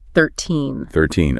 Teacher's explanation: They are similar, but the stress pattern is completely different, and this is the secret. In the teen numbers, the stress is at the end. It rises.